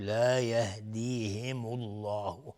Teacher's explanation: لفظ جلاله در اینجا مفخم هست چون قبل ضمه اومده